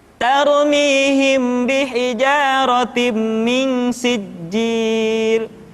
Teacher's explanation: Di sana ada mim mati ketemu ba, kemudian ada nun mati, kemudian ada mim tasydid yang dibaca secara tergesa-gesa.